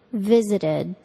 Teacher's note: The ed verb ending sounds like id.